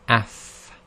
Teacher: you just touch the upper incisors to the lower part of the inside of the bottom lip itself. Okay, and that's called the wet part of the lips. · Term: Fa